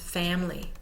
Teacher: Family, for example, is often pronounced family because the I in the middle has the schwa vowel sound, has become so lazy and is not sounded out fully